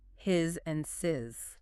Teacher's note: The contraction must sound like the original word is at its core, meaning it should be a voiced Z sound.